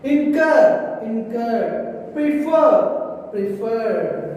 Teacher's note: Here we are giving some stress at the last syllable.